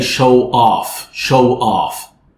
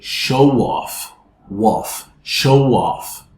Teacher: when you have a word ended in a rounded vowel, followed by a word starting with a vowel, you can add the w sound as an intrusive sound